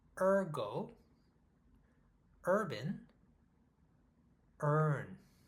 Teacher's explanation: my tongue goes up and to the very very back of my mouth